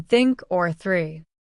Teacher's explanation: Unvoiced th as in think or three. Place the tip of your tongue gently between your front teeth. Blow air out. There is no sound from your vocal cords.